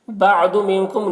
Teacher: نون میں اخفا ہو رہا، نون کی آواز کو ناک میں چھپا کر پڑھیں گے